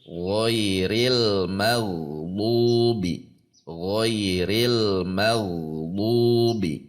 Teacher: dengan menegangkan pangkal lidah dua harakat tidak boleh lebih